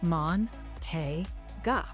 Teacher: Make the middle syllable clearly te, a little brighter and longer than the others. And the ending ga is soft, not ga like English, more open and gentle.